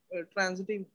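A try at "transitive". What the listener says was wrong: ट्रांसिटिव बेटा कहना, ट्रांजिटिव नहीं कहना, ट्रांसिटिव,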